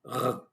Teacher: Esta es lengua hebrea, supongo que lo que se escucha, ustedes pueden escuchar inmediatamente que hay muchos sonidos que llegan de la garganta porque pronunciamos la R, no con la lengua como los hispanohablantes, sino con la garganta, un poquito parecido a la R francesa, pero la R francesa es más profunda, y la R hebrea no es tan profunda, es R, algo así más o menos. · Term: R con la garganta